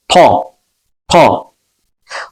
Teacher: ta hərfi qalın hərflərdəndir. Bunun məxrəci dilin ön dişlərinin arxasıdır.